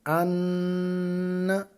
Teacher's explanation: ہم نے اس نون کے اوپر پھر غنہ کرنا ہے، یعنی کہ ناک میں آواز کو گھمانا ہے۔ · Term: نون مشدد